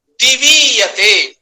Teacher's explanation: उसका उदाहरण उन्होंने दिया, दिवीयते, माने दिवी पूर्व में है, ईयते पर में है। अब दिवी में जो वकारोत्तरवर्ती इकार है वो भी उदात्त है, ईयते में जो इकार है वो अनुदात्त है। · दीर्घ संधि होकर के जो दीर्घ इकार आया वो भी उदात्त स्वर वाला होगा